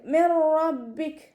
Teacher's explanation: മിർ റബ്ബിക് നൂൻ സാക്കിനയ്ക്ക് ശേഷം ഇദ്ഗാം ബിലാവുനയുടെ അക്ഷരമായിട്ടുള്ള റോ വന്നു. നൂൻ സാക്കിനയെ റോയിലേക്ക് ലയിപ്പിക്കുന്നുണ്ട്, പക്ഷെ മണിക്കാതെ ഓതിക്കൊടുക്കുക. മിർ റബ്ബിക് എന്ന് പറഞ്ഞിട്ട് ഓതരുത്.